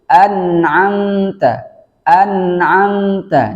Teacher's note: Mimnya berharokat sukun dipantulkan juga. Seharusnya tidak dipantulkan menjadi an'amta.